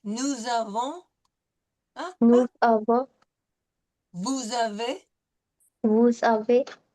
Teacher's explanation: when we have the S in front of a vowel, it's going to be a liaison with the S taking on a Z sound